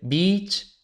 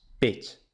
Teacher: el del inglés beach, playa, con i larga, y beach, perra, con i breve